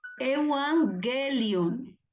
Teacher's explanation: cuando hay dos gamas seguidas, la primera gama se pronuncia como una N